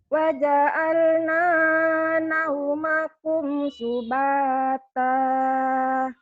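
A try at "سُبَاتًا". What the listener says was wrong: Jangan subatah ya. Subata.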